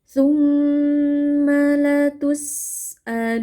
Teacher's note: nun tasdid ghunah panjang